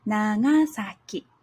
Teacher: Na begins low Ga is higher and then for sa ki it's low again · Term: nakadaka